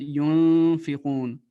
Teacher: Et ikhfa, ça veut dire que il doit avoir un son nasal.